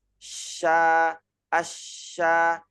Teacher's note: kalau huruf shin itu tengah lidahnya hanya terangkat saja. Sya, asya, tapi tidak menempel di langit-langit.